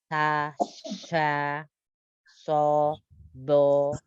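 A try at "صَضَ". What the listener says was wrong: Tebalkan lagi yang fo-nya. Jangan monyong. Angkat pangkal lidahnya.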